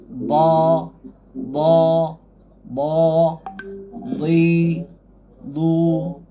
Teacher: Tebal dia tebal dia kerana kita tegangkan pangkal lidah ni. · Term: Isti'la